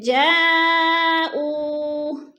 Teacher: 4 الف مد ہے، ہم نے اس کو 4 الف کے برابر کھینچ کر پڑھنا ہے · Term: مد متصل